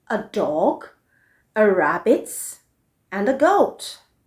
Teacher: you'll notice that the voice drops on goat because that is the last word